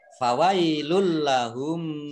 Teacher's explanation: Dhammah tanwin bertemu dengan huruf lam, idgham bila gunnah, masuk dengan tidak mendengung, yaitu masuk ke huruf lam, ditandai dengan lamnya ada tasdidnya.